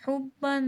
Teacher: تنوین ہے، تنوین میں غنہ ہوگا۔